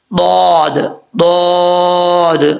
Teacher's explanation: ضاد کا مخرج ہے زبان کی لیفٹ سائڈ جو ہے، یعنی الٹی سائڈ جو ہے، اس کو اوپر والی جو داڑھیں ہیں ان کے ساتھ ٹچ کریں گے، زبان کو اوپر کی طرف اٹھائیں گے، اور پھر یہ ضاد پڑھا جائے گا فل ماؤتھ.